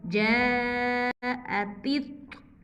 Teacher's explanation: یہاں پہ تا باریک پڑھیں گے اس طا کو موٹا پڑھیں گے